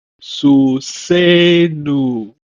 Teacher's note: Susenu is stressed on the linking vowel.